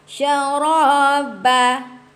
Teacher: Syaraba. Ra tebal. Ba nipiskan balik. Yang mana nipis tu senyum ya.